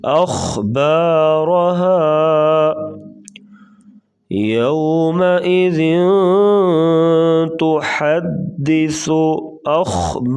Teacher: خا کو پور پڑھیں گے اور را کے اوپر زبر، را کو پور پڑھیں گے،